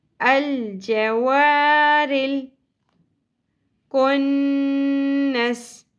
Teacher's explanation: رل را کی زیر لام کے ساتھ جڑ جائے گی. رل لیکن لام ساکن پہ قلقلہ نہیں کرنا, رل نہیں پڑھنا.